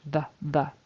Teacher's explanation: it has to be a TH there, a voice TH, the, tongue between the teeth